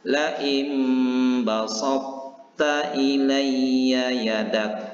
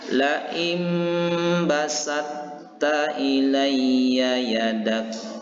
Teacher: idgham kamil, yaitu langsung sempurna huruf ta-nya, tidak ada lagi kedengaran huruf to-nya